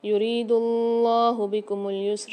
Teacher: یہاں پر اللہ کے لام کو موٹا کر کے پڑھیں گے اور کھینچ کے بھی پڑھیں گے